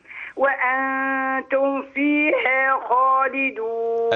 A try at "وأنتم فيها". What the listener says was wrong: أبين الميم من الفاء، وأنتم فيها